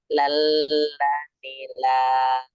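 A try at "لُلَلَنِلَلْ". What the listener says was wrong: Nggak boleh ditahan. Nggak boleh lulala. Ini ketahan. Ya, kedengeran sih. Cuman yang penting nggak boleh terlalu lama-lama kan lamnya nggak pakai gunnah. Jadi lulalanilal langsung. Lulal.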